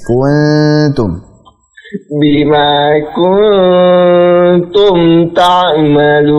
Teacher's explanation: Untuk gunnah pada kuntum tarik ya supaya tipis